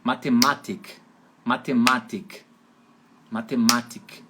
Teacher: na Áustria, essa palavra matemática, a sílaba tônica fica em cima do segundo A, como é em português. Então na Áustria seria Mathematik.